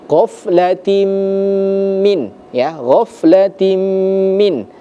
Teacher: ada huruf kasratain tanwin bertemu dengan huruf huruf mim. Maka hukum bacaannya dalam ilmu tajwid disebut dengan idgham bighunah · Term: idgham bi gunnah